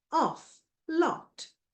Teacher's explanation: aw sound, back, open, rounded